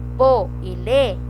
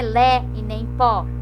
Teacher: Pô e lê, ele é fechado, ele não é lé e nem pó.